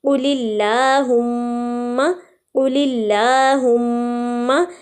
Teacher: ساری لام باریک ادا ہو رہی ہیں کیونکہ اللہم کے لام سے پہلے بھی زیر آ رہی ہے